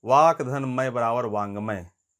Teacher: क का पांचवा जो वर्ण है इंगा में परिवर्तन हो रहा है, ट का आधा ण में हो रहा है, त का न में हो रहा है।